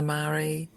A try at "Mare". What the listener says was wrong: And by the way, it's Mare. It's just one syllable. It's a little confusing for people, but just one syllable.